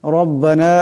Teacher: এখানে রা মোটা করে পড়তে হবে